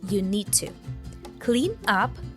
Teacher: so the D sound from need moves into the T sound from to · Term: connected speech